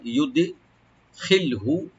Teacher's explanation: একটু আমরা কলকলা করবো একটু হালকা